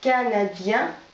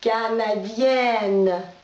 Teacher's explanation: Тоже носовой звук уходит. Получается чистый «н».